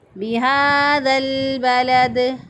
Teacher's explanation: ذال کو لام کے ساتھ ملا دیا، اور یہ دونوں الف پڑھنے میں نہیں آئیں گے، اور لام ساکن کے بعد با آ رہا ہے، اور با جو ہے وہ حروف قمریہ میں سے ہے، تو یہاں پر الف لام کا اظہار قمری ہو رہا ہے۔